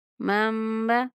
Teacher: میم زبر میم مم، با زبر با، مم با۔ یہاں پر نون ساکن کے بعد با آ رہا ہے تو اس وجہ سے نون کو میم سے بدل کر غنہ کے ساتھ ادا کیا جائے گا